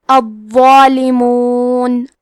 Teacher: کلمت الظالمون میں حرف الضو ہے اور اس پہ تشدید ہے، تو ہم 2 حرف کے برابر ضو کو پڑھیں گے، اور یہ حرف کو موٹی آواز میں بھی پڑھیں گے کیونکہ اس پہ کھڑا زبر ہے تو یہاں مد الف ہے، لہذا ہمیں مد الف کو بھی تفخیم سے ادا کرنا ہے۔